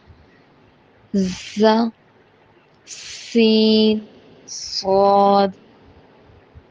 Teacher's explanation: ز، سین، صاد تینوں کا مخرج ایک ہی ہے۔ زبان کی نوک کو نیچے کے دانتوں کے کناروں سے لگائیں گے تو ز ادا ہوگا